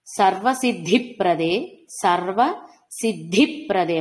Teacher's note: మహాప్రాణ ధకారం కూడా వినపడాలి.